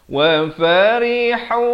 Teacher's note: ha pedas di pertengahan kerongkong dibacakan dengan baris dhammah 2 harakat.